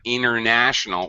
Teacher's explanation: So what happens is we just reduce the sound international. We get rid of the T.